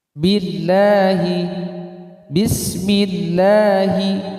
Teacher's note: Dibaca tarqiq jika lafadz Allah didahului harakat kasrah. Maka dibaca tipis, contohnya billahi bismillahi.